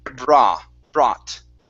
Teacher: we don't want to add an oo sound, so it won't be brought. Okay, it's only an ah.